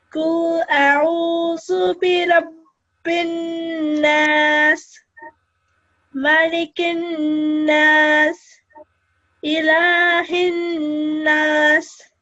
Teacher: noon is mushaddad, you have to prolong the sound of the noon ghunna. It makes a nasal sound, and you have to prolong it for 2 seconds.